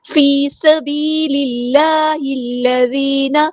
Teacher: سبیل اللہ الذین، یا مد آئیے ٹو کاؤنٹ لمبا کریں گے، سین کی سیٹی ہم واضح کریں گے